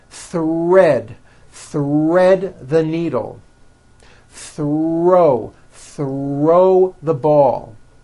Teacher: when producing these Blends I want you to be aware that the r is the strongest sound of the blend and is louder than the th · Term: th HR Blends